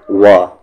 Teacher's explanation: واو ایک ایسا لیٹر ہے جس میں ہمیشہ جو لپس ہیں وہ راؤنڈ شیپ میں آ جاتے ہیں۔ اگر لپس راؤنڈ شیپ میں نہیں آ رہا ہے یعنی واو کا مخرج، واو کا پروننسیشن صحیح نہیں ہے۔ · ہوتا کیا ہے کہ واو بولتے وقت اکثر لوگ اوپر کے دانت نیچے کے لپس میں ٹچ کر دیتے ہیں اور کہتے ہیں و، جیسے انگلش میں وی کہتے ہیں، تو ویسے بولنا غلط ہے۔ لپس کو راؤنڈ کرنا ہے و، جیسے کہ انگلش میں ہم ڈبلو بولتے ہیں۔ وَنُفِخَ، خا کا مخرج اپر تھروٹ، جہاں سے غین کا مخرج بھی نکلتا ہے، خ۔